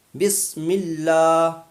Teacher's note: بسم اللہ میں اللہ سے پہلے زیر ہے، تو وہاں بسم اللہ کا جو اللہ ہے وہ باریک ہوگا